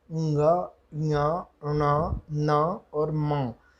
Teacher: उसी प्रकार टवर्ग में ण में, तवर्ग के न में, पवर्ग के म में, इनके जो अपने मुख्य उच्चारण स्थान है उसके साथ साथ नासिका का भी प्रयोग होता है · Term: अनुनासिक